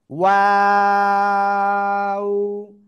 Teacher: দুই ঠোঁট গোল শুরুতে হবে, মাঝখানে দুই দিকে প্রসারিত হবে, শেষ আবার গোল হবে।